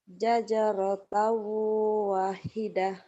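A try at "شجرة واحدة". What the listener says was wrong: Wahnya panjang. Zajarata wahidah.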